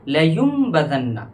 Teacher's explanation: नून नहीं पढ़ा जाएगा बल्कि मीम पढ़ा जाएगा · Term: इक़लाब